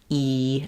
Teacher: when you say e you can feel how your jaws closed your tongue fills up your whole mouth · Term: high front vowel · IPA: /i/